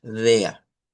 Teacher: esta es una vocal que se le conoce como A media, que sustituye en el Deutsch estandarizado a la R. · Este DEA debe de hacerse con una E abierta. Este símbolo lo vamos a utilizar como una E abierta.